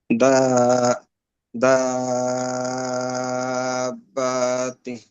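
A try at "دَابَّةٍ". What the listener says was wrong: বাটা টান হবে না, বা একটু টান হয়ে গেছে, বাটা তাড়াতাড়ি হবে। না, বা টান হবে না, বাতে কি আছে, হরকত আছে না, হরকতের উচ্চারণ তাড়াতাড়ি। দা বাতিন।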